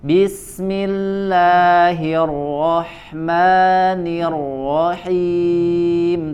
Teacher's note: Nah, di bacaan bismillah, ya di bacaan basmalahnya distabilkan, dikonsistenkan bacaan madnya 2 harokat. Bismillahirrahmanirrahim, tidak terlalu panjang.